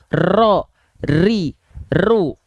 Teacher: dia itu bergetar tapi tidak terlampau berlebihan · huruf ro ya dia tidak dilafalkan dengan getaran yang berlebihan atau Getaran yang banyak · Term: takrir